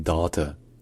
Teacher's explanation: c'est un A qui est long et c'est un A qui est en arrière de la bouche